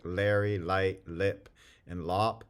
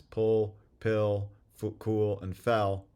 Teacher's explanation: dark L is more accurately described as velarized raising of the back of the tongue